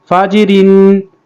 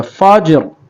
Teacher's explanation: जब वक़फ़ करेंगे तो रा पुर होगा